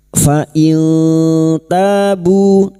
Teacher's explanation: Nun sukun dibaca samar dan mendengung selama tiga harakat. · Fa in nun sukun bertemu ta ikfa hakiki, nun sukun dibaca samar dan mendengung selama 3 harokat. Fa in tabu masing-masing 2 harokat kita panjangkan mad tabi'i fathah diikuti alif, bu duma diikuti wawu sukun, 2 harokat kita panjangkan mad tabi'i.